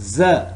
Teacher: it's voiced alveolar fricative sound.